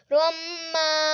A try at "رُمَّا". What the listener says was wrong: نہیں پھر غنہ نہیں غنہ آپ نہیں کرتے